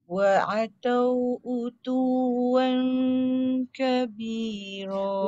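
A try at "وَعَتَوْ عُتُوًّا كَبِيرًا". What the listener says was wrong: Wan tu jangan wan, itu tak turun. Wa ataw utuwan kabira. Ah, kan dia tegak utuwan, utuwan.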